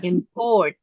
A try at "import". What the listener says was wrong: Tidak import. Import. I-nya jangan panjang-panjang ya. Import.